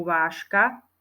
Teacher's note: za suseda neznel párovú to sme si ukázali na slovíčku vážka píšeme tam ž susedka je k a vyslovujeme to ž ako š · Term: spodobovanie